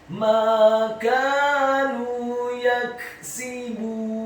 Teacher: Ala qulubihim ma kanu Kata makanu, huruf mimnya dibaca tipis, fathah 2 harokat karena setelahnya ada alif. Huruf kafnya dibaca tipis, fathah 2 harokat karena setelahnya ada alif. Dan huruf nunnya dibaca tipis, dhamma 2 harokat karena setelahnya ada wawu sukun.